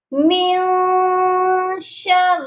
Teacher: من شر اب یہاں پر جو نون ساکن ہے اس کے اوپر اخفا ہوگا، سافٹ غنہ ہوگا